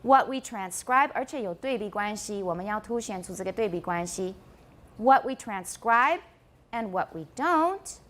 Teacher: Drops down low and a gentle rise. This is the shape of a continuation rise.